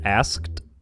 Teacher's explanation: In Wiktionary GA, the K isn't usually sounded out.